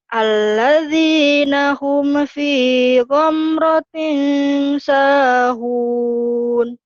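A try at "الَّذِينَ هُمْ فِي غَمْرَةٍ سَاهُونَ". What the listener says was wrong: Alladzi, bukan alati ya. Alladzina hum fi ghamratin sahun.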